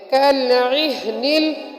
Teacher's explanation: کالعہن کی عین کو، عین حروف حلقی میں سے ہے جو حلق کے بیچ سے ادا ہوتی ہے عین، تو پڑھیں گے کالعہن اور ہا حلق کے آخری حصے سے جو سینے کی طرف ہے وہاں سے ادا ہوتی ہے، تو اس کی آواز ہا کی آواز نکلے گی، اور منفوش میں منفوش یہاں پر نون ساکن ہونے کی وجہ سے اخفا ہوگا۔